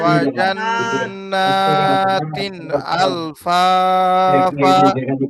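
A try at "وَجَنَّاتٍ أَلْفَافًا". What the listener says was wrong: এই তো ভাই লাস্টের ফা টান কম হয়েছে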